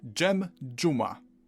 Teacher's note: We've covered z turning into ż, and now this can merge with a d into dż.